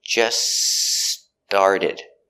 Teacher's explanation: that t in just that is between consonants so it is silent so you hear just started not just started just started link